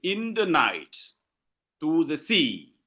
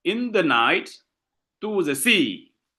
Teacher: You see when I pronounce you find that the level of accentuation is not the same. I say in the night I insist on night and I say to the sea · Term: anapestic